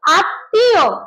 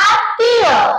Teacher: শব্দের মাঝে তয়ের সঙ্গে ম ফলা থাকার কারণে ত দুইবার উচ্চারণ করতে হবে এবং শেষের ততে চন্দ্রবিন্দু থাকবে। উচ্চারণ হবে আত্মীয়।